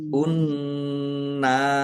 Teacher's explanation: Nun tasdid dibaca ghunah atau mendengung.